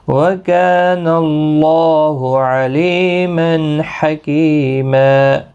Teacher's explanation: وَكَانَ اللَّهُ عَلِيمًا حَكِيمًا، کا الف مدہ ہے، اور اللہ کا لام زبر کی وجہ سے پر پڑھا جائے گا، یعنی موٹا پڑھا جائے گا، اس کے اوپر کھڑی زبر بھی ہے، ایک الف کی مقدار کے برابر کھینچ کر بھی پڑھیں گے۔